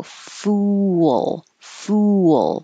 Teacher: you have to round your lips for the foo but then for a good L at the end you should not round your lips so you have to go fool fool but it's smooth and